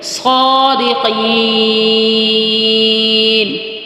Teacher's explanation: اب یہاں پر صاد موٹا بھی پڑھیں گے، سیٹی کے ساتھ بھی ہوگا، اور اس یہاں پر صاد کا جو موٹائی کا جو درجہ ہے وہ سب سے اولا، یعنی خوب موٹا کر کے پڑھیں گے